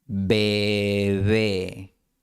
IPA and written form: be'βe (bebé)